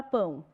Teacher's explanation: o A sempre é vogal, o O está mais baixo, semivogal. Vogal com semivogal formou um ditongo, que a gente vai chamar de crescente ou decrescente.